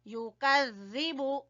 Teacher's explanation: زال کو زبان کی نوک اور سامنے والے دو دانتوں کے سرے سے